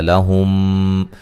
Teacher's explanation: میم ساکن کا ادغام ہے، ادغام میم ساکن کا، ٹھیک ہے، غنہ کے ساتھ